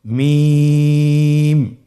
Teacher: 2 ঠোঁট চেপে ধরে আমরা উচ্চারণ করব মিম